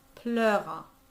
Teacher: The EU is often pronounced E, but in this case, it's much more of an A.